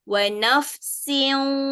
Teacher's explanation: Jadi kita kena naikkan angin ke hidung, dia ada bunyi sengau sikit. Tapi fokus dia bunyi siu juga.